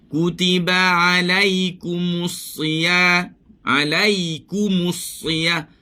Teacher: Kita ambil ain di bahagian atas sikit daripada biji halkum.